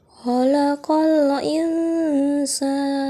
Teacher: Ikhfa pada insa karena pertemuan nun sakinah dengan huruf sin sehingga dibaca samar dengan gunnah. Yang ketiga, mad arli lisukun pada sa'an sehingga dibaca panjang 2 atau 4 atau 6 harokat dan hukum terakhir menjadi waqaf.